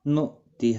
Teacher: نؤتہ جھٹکے کے ساتھ، ہا کے نیچے کھڑی زیر ہے، ایک الف کی مقدار کے برابر کھینچ کر پڑھیں گے